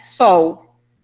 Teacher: a gente pronuncia no Brasil quase é como se fosse um U, né?